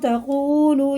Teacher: واو ساکن سے پہلے پیش، دونوں حروف واو جو ہیں یہ حرف مدہ ہیں، الٹے پیش کی طرح انہیں کھینچ کے پڑھنا